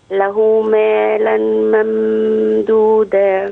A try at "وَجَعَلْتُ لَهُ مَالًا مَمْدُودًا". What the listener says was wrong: طيب الغنة فين بقى؟ مالا ممدودا.